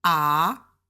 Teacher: the first tone ah it's just high and straight across